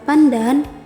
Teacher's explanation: pada kata pandan bunyi N ini berubah menjadi apiko-dental karena ada fonem D yang mempengaruhinya